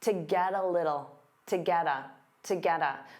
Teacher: So to becomes that unstressed ta, get a combines together, get a, to get a, to get a.